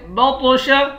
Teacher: طا کو موٹا بھی پڑھیں گے اور طا پر قلقلہ بھی کریں گے